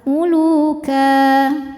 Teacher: Sebab ada baris tanwin fathah yang diwakafkan. Maka cara membacanya adalah tanwinnya bunyi n-nya hilang ya. Jadi ka dan panjang dua harakat. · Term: mad iwad